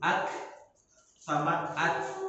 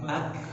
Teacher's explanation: Huruf hamas itu ada 2, kaf dan ta. Jadi ak sama at. Jadi ada angin setelah huruf itu. Jadi sangat berbeda antara kaf dan kof.